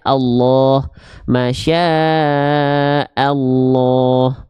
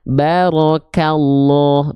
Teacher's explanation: Kalau kita mendapati ada lafaz Allah ya, oke, yang diikuti sebelumnya oleh bunyi vokal A atau bunyi vokal U, maka huruf lamnya harus dibaca dengan keadaan yang tebal. Keadaan yang tebal itu mengharuskan lam dibaca condong pada vokal O. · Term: lam jalalahnya